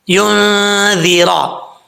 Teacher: اب نون ساکن کے بعد اخفا ہو رہا ہے، نون ساکن کا اخفا. ذال بغیر سیٹی کے پڑھا جائے گا، اس کو سیٹی کے ساتھ نہیں پڑھنا